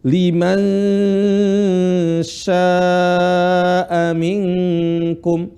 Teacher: posisi lisan yaitu Tengah lisan ke langit-langit dan ditahan dua harakat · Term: ikhfa